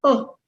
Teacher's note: i'm going to say it in a very very low pitch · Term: intonation